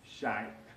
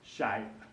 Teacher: Sha'b in Arabic, with the glottal stop at the end of the word